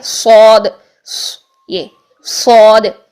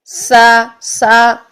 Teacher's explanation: ٹھیک ہے، سین اور زا میں باریک سیٹی ہوتی ہے اور صاد میں جو ہے وہ موٹی سیٹی ہوتی ہے